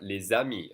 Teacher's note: I'm connecting the S with the next vowel with the Z sound.